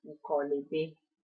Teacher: So therefore, the consonant sound in the first, like the consonant sound at the end of the first word is then transferred onto the beginning of the second word, which makes it more fluent, like more fluent when you speak, so in the spoken language. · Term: contraction